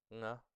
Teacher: We can use the velar nasal.